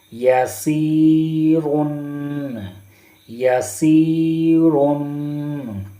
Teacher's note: یہاں پر یا ساکن ہے اور یا ساکن سے پہلے زیر ہے، تو یا کو ایک الف کے برابر کھینچ کر پڑھنا ہے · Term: یا مدہ